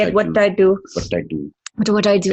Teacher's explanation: And then you have that sort of dentalized T